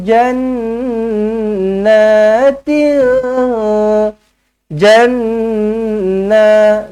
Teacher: nun sabdu wajibul gunnah, dengungkan 2 harakat.